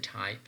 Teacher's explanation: when you are producing ta, there is less amount of vibration in the vocal folds. Alveolar, because your tongue is touching that alveolum region, or alveolar region, right? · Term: voiceless